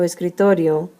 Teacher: because the word ends in a vowel o then the strong syllable is the second to last